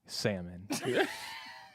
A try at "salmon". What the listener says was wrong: with the L. Pronounce the L.